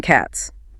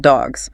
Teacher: S is voiceless like in cats, but Z is voiced like in dogs